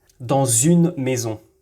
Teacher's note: après le premier mot le son S devient /z/